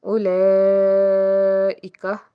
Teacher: بڑی مد ہے، 3 سے 5 الف کے برابر اس کو کھینچ کے ادا کریں گے۔